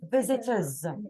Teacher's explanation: So you are skipping the O and the R.